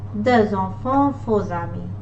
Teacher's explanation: S and X becomes Z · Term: liaison